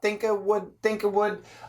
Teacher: little bit of a stop almost a glottal stop